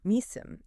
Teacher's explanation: Nissim, emphasizing the first syllable.